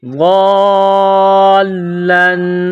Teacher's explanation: میں نے پچھلے ویڈیوز میں اس کو اچھے طریقے سے سمجھایا ہے کہ جس حرف پر یہ آ جائے اس حرف کو سختی اور جماؤ کے ساتھ پڑھیں گے، جیسے ضالن، غاد الف لام مد زبر غالم دو زبر لن، غاد الف لام مد زبر غالم دو زبر لن۔ یہ مد ہے، 4 الف کے برابر اس کو کھینچ کر پڑھیں گے